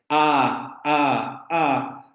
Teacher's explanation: La vocal A es muy abierta, nuestra cavidad vocal se abre. A. Pero si pronunciamos la vocal I y la vocal U, nuestra cavidad bucal se cierra.